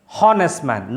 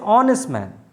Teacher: an honest man h o e we spell it as h the spelling of the word starts with h-h-o-n-e-s-t but the pronunciation doesn't start with h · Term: h is silent